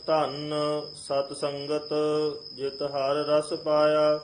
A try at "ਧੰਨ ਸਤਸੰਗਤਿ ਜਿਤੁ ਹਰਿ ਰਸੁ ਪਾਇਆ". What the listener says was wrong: ਪਹਿਲਾਂ ਧੰਨ ਦੇ ਉੱਤੇ ਟਿੱਪੀ ਨਹੀਂ ਹੈ ਇਹਨੂੰ ਪੋਲਾ ਬੋਲਣਾ ਹੈ